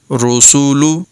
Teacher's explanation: را پر ہے سین کی اواز باریک ہوگی